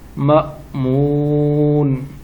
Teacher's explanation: جھٹکا دیں گے، یہاں حمزہ ساکنہ ہے